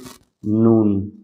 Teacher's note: জিহ্বার আগা তার বরাবর উপরে তালুর সাথে লাগিয়ে নুন, জিহ্বার আগা তার বরাবর উপরে তালুর সাথে লাগিয়ে নুন, মানে জিহ্বার আগাটা আপনি উপরে লাগিয়ে নুন বললেই হয়ে যায়, ওকে।